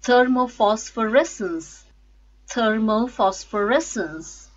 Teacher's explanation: stresses on fifth syllable res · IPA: /ˈθɜːməʊ fɒsfəˈresns/